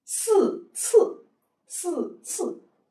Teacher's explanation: 发音都在前面，从牙齿缝里发出来的啊